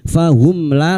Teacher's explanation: Mim sukun bertemu lam idhar syafawi. Mim sukun dibaca jelas tanpa mendengung. Fahum la lam alif dua harakat kita panjangkan.